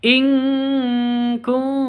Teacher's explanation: nun mati bertemu dengan Kaf cara bacanya samar didengungkan siap-siap ke huruf kafnya nun matinya ditambah dengan ng maka cara bacanya intum seperti itu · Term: ikhfa Hakiki